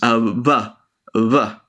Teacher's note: In Spanish, it if there's a consonant before it or if it's starting a word, it could come up more like a of unique sound to Spanish, which is vuh, v, which is like you're trying to do a v sound but with both of your lips instead of your teeth